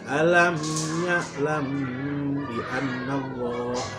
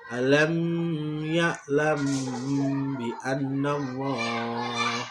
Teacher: harus disamarkan antara mim dan ba-nya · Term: ihfa safawi